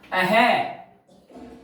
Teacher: जैसे अपन ऐसे बोलते हैं ना अह, ये जो आगे जो दो ये जो लगती है बिंदियां ना, इसी का नाम विसर्ग है। यह भी कहां से बोला जाता है, कंठ से, क्योंकि इन दोनों बिंदियों का उच्चारण होता है है की भांति।